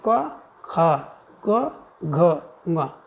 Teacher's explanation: तो एक अल्प, फिर महा, फिर अल्प, फिर महा, फिर अल्प। तो 1 3 5 जो है अल्प प्राण होता है।